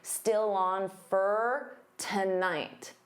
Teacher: Again, for can become fur